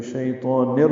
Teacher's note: نون کے نیچے تنوین ہے اور اس کے بعد را آنے کی وجہ سے ادغام کامل ہے، نون کو را سے ملا دیں گے